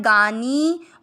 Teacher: नी की मात्रा बड़ी लंबा खींचना है